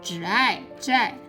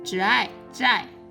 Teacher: The initial is 之. And the final is I. And its falling tone.